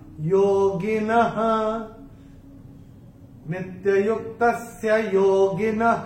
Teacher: चरण की समाप्ति पे जो विसर्ग आ रहा है, चरण की समाप्ति पे है, तो इसका उच्चारण केवल और केवल ह ही होगा। योगिनः, नित्ययुक्तस्य योगिनः, ये ऐसे करके आएगा।